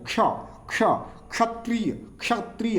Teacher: मान लीजिए क और मूर्धन्य स, तो क स संयोग क्या बनता है क्ष, क्ष ऐसे उच्चारण करेंगे। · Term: संयुक्त वर्ण